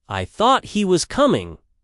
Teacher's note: If someone says, "I thought he was coming," stress on thought implies a change of mind or that the thought was mistaken.